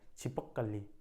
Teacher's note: अब कुछ लोग बोले छिपक कली दिख रही है, छिपक कली, तो आप देख रहे हो, आप समझ गए कि ये बात हो रही है छिपकली की, ठीक है। लेकिन जो दूसरा आगे वाला बोलने वाला है वो प पे ज़्यादा जोर दे रहा है, छिपक कली, ठीक है। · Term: बलाघात